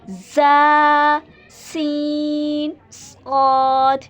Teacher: Next बच्चों है सीटी वाले हरूफ, इसके बारे में भी पढ़ चुके हैं। मतलब क्या है कि इन हरूफ को अदा करते हुए सीटी वाली आवाज़ निकलनी चाहिए, थोड़ा मजबूती के साथ हम अदा करते हैं इन हरूफ को।